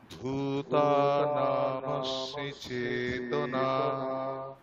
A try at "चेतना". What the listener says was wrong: আচ্ছা আমরা একটু উচ্চারণে এই অকারের সমস্যাটা আছে, অকারটা আমি ওকার করে দিচ্ছি, যেমন বা সোবাহা, চেতনা, ঠিক আছে। তাহলে ওকারটা যাতে না হয়, অকারের উচ্চারণটা অকারের মধ্যেই হবে, ঠিক আছে। মানে চেতনা, চেতনা নয়, চেতনা। ওকারটা যাতে মানে ভুল না হয়, এটা একটু অভ্যাস করবে।